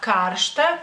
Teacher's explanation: porque el acento en este caso cae sobre la a